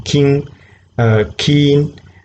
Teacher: the back part of the tongue is touching the back part of the roof of the mouse therefore it's vlar it's a process because there's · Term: velar, voiceless velar plosive